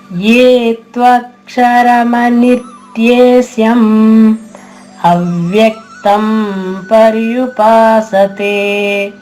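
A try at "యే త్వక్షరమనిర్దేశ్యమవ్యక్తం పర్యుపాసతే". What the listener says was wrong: జై శ్రీకృష్ణమ్మ, చాలా బాగా పాడారు.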